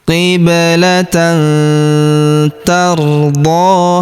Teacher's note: Maka tanwin annya melebur masuk ke huruf ta. Kita baca dengung dan samar. Dengungnya kita tahan dua sampai 3 harakat. · huruf d kita panjangkan dua harakat karena terdapat alif kecil di atasnya